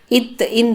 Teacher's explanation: நாக்கோட நுனி மேல்பல்லின் அடியை தொட்டு இத இந்து அப்படின்னு சொல்லணும்